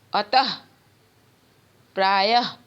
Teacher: विसर्ग का उच्चारण ह, आधा ह का होता है, अह नहीं होता, ह के नीचे हलंत होता है।